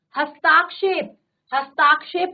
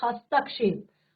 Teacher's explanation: कहीं पर हमें ह्रस्व की जगह हमने दीर्घ लगा दिया